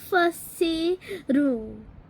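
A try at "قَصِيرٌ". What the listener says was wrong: फसीरुन नहीं हो, कसीरुन है. कसीरुन.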